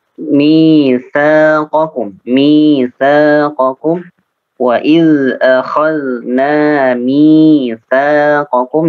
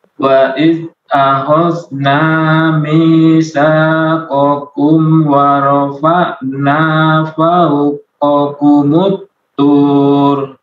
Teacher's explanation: mi panjang, sa 2 harakat juga sama panjangnya